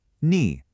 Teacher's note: That's the third tone. It has to dip down and come back up.